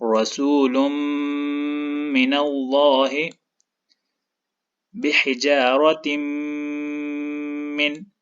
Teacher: اب یہاں پر دیکھیں، اس مثال میں تا کے نیچے تنوین ہے اور یہ تنوین میم کے ساتھ شد کی وجہ سے جڑا ہوا ہے، تو یہاں پر ادغام ہوگا، اور اس تنوین کے بعد میم ہے تو اس ادغام پہ غنہ بھی ہوگا